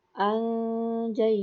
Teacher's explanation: nun mati bertemu dengan ja dibaca dengan mendengungkan huruf ja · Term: ikhfa